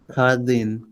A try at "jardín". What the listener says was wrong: Jesucristo, Khota, Jesucristo, and then Khardin. You can't say Jardin. You have to say Khardin.